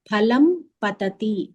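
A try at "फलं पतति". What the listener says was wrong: నువ్వు ఫ అనకు అది చాలా తప్పు ఫ అనకూడదు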